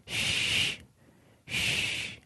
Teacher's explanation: Jadi ada tafasyi yang artinya udara yang menyebar ya.